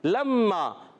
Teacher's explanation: لام کو میم سے ملائیں گے, لام مشدد نہیں ہے, میم مشدد ہے, تو لام کو میم سے ملانا ہے اور میم پر تشدید ہے.